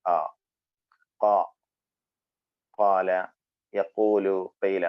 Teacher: വയുടെ ഉൾഭാഗമാണ് ആ എന്ന സൗണ്ടിന്റെ മഹ്റജ് ആ കാല യക്കൂലു ഫൈല മൂന്നിന്റെയും മഹ്റജ് ഒന്ന് തന്നെയാണ് സിമ്പിൾ ആയിട്ട് ഒന്ന് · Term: മദ്ദിന്റെ മഹ്റജ്